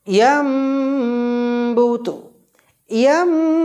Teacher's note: আপনারা দেখতে পাচ্ছেন নুন সাকিনের পরে বা আসার পরিপ্রেক্ষিতে নুন সাকিনের উচ্চারণটাকে হজব করে দিয়ে ছোট্ট মিমের সঙ্গে যুক্ত করে গণ্যা করে পড়ব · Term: ইকলাব গুন্না